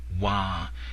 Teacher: Wah in a longer, sustained tone, sometimes called the second tone